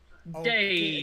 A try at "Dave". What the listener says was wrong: Again, you're putting the accent on the wrong thing. Dave. Oh, it's the emphasis on the duh. Dave.